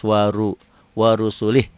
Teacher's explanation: Wa ru'wanya pendek, ru'nya tebal karena barisnya ro-nya di atas.